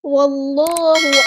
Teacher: واللہ علیم، واو کو ہم نے لام کے ساتھ ملا دینا ہے، حمزۃ الوصل کا ڈراپ ہو جائے گا، اللہ کا لام یہاں پہ ہم پورا ادا کریں گے، موٹا ادا کریں گے